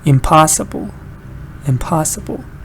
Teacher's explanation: when you add im, you get another unstressed syllable. Da da da da.